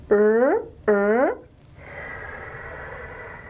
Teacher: it's called a retroflex approximant but look we'll just call it post alveolar because it's easier to deal with the tongue tip curls back